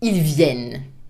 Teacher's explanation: the final ENT in plural is never pronounced